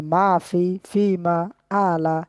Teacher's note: জবর সবগুলো একটু টান হয়ে যাচ্ছে